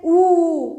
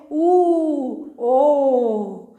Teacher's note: होंठ दोनों टच नहीं हो रहे हैं, लेकिन दोनों होठों से क्रिया हो रही है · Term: ओष्ठ